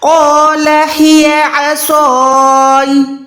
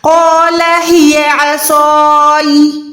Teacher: या साकिन की साउंड दें, या को ज्यादा प्रॉपर वाज़ेह ना करें, क्योंकि यहाँ पर या कलकला नहीं है, ठीक है। या जबर है, उसको या साकिना में कन्वर्ट करें।